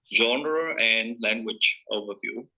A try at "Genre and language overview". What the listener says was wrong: Good stress there. And good final sounds.